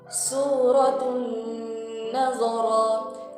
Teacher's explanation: tanwin bertemu dengan huruf nun, maka hukumnya adalah idgham ma'al gunnah. Membaca adalah membacanya dengan kadar dengung dua harakat.